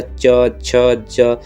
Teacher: कहीं ना कहीं जीभ को हमने रोक कर ऊपर को उठाना ही पड़ेगा, उसे तालु वर्ग कहेंगे। इसमें य और श, ये भी तालु में आ जाते हैं।